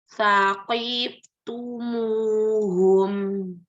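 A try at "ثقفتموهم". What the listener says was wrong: Fa-nya nggak kedengeran rokoahnya. Belum kedengeran rokoahnya, huruf fa.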